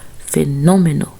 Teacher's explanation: Ela tem a antepenúltima sílaba tônica, que é no, fenômeno.